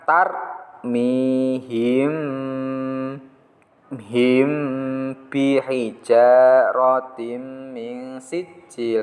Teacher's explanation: Apabila ada mim sukun bertemu dengan ba harus dibaca dengan dengung yang lama. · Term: ikhfa safawi